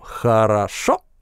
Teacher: У нас здесь резко повышается тон и мы обрываем гласный гортанной смычкой.